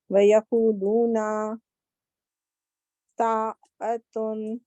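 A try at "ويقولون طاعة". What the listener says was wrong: اچھا تھوڑا سا نا تا کو تھوڑا سا موٹا کریں. طاعت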